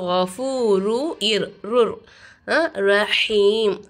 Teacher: ஒரு எழுத்தை இன்னொரு எழுத்தோட ஜாயின் பண்ணி குன்னா செய்யாமல் ஓதணும்